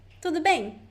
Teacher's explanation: The question usually goes up, tudo bem. And the answer, it's more, doesn't go up.